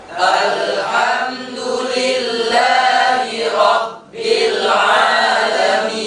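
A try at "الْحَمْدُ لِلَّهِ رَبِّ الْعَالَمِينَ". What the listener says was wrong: Matikan lamnya sempurna. Sukun mahdoh namanya. Ini sukun mahdoh. Mahdoh tu murni. Alham. Tekan di makhrajnya. Ujung lidah tadi mengenai langit-langit kan? Alham. Tekan ujung lidah di langit-langit itu. Alham. Baru ditarik. Sempurna matinya baru ditarik lidahnya. Alham.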